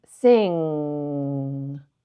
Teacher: It's where the back of the tongue kind of curls up to meet the soft palate.